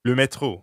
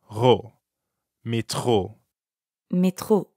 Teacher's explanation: the french r is in the middle of metro so it sounds like you're clearing your throat